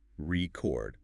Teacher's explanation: R-E chord, noun. But stress the second syllable, record, now it's a verb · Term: word stress